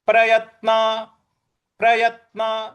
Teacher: य के बाद जो त है उस पर हमको आघात देना है